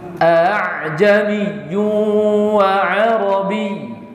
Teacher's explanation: Yaitu hamzah yang pertama dibaca jelas, sedangkan yang kedua dibaca samar. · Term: tashil